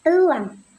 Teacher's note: Fonem E diucapkan dengan lidah yang agak tinggi dan posisi lidah di depan seperti pada kata elang.